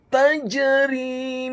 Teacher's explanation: Kemudian kata tajri, huruf ta-nya dibaca tipis fathah 1 harokat. Huruf jimnya dibaca sukun, tafkhim tebal dan wajib untuk dikolkolakan atau dipantulkan. Dan huruf ra-nya dibaca tipis tarqiq kasrah 2 harokat karena setelahnya ada huruf ya sukun kemudian diwakafkan.